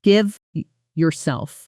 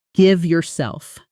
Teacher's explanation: In slow, careful speech, you'd hear give yourself two separate words. But in natural fast speech, that V sound often blends directly into the Y, creating something closer to give yourself. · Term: connected speech